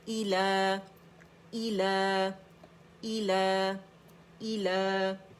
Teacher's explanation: کیونکہ یہ حمزہ کسرہ ای ہے, انگلش لیٹر ای کی ساؤنڈ آنی چاہیے